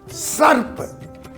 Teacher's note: दंत स जो दांत की सहायता से बोला जाए